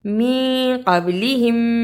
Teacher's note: قاف کو موٹا پڑھا، با پہ قلقلہ کیا. میم ساکن کے بعد میم آیا ہے اسے ادغام شفوی کہتے ہیں، اسے ادا کیا.